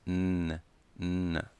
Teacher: A ponta da língua está no início do céu da boca. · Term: Letra N